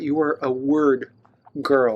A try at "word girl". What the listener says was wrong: You almost sound like ward girl.